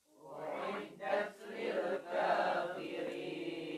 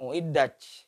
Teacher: tak sukun ini berdesis ketika sukun. Sehingga uiddat ada angin. Bukan uiddaj.